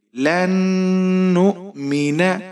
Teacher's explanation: یہاں نون پر آپ غنہ کریں گے، ناک میں آواز کو لے کر جائیں گے۔ لام کے اوپر زبر ہے، بغیر کھینچے پڑھیں گے۔